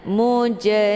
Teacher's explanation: yang terdapat di pertengahan kalimat ini dinamakan dengan qqalah cara bacanya huruf jimnya dipantulkan dengan pantulan ringan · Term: qalqalah sughra